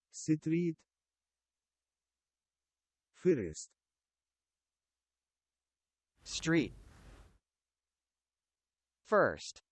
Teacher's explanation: we're having r s and t sounds together no vowels in the middle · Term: consonant clusters